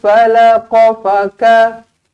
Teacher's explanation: Terus matikan dekat nun kosong. Nun kosong bertemu dengan fa, didengungkan dua harakat ikhfa hakiki.